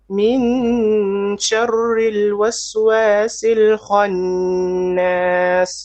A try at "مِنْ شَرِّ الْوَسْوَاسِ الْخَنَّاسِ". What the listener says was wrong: Okay, make your ra more flat. Ri. Once again.